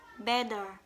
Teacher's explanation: the syllable is weak when it has the short vowel e. For the example like better, the second syllable is weak.